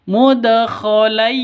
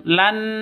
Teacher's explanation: Masuk ke ya. Disertai dengung 2 ketukan. Idgham bi gunnah.